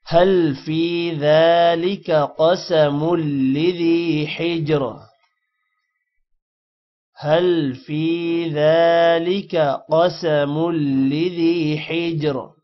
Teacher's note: ذالک ذال پر کھڑی زبر ہے، لمبا ہوگا۔